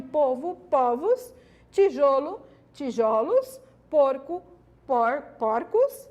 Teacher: por plural metafonico ok uma vez que alteração ocorre somente ó no timbre da vogal tônica fechada para vogal tônica aberta